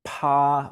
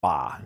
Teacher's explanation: when i say paw i feel a little puff of air coming out my mouth i don't feel that with the ba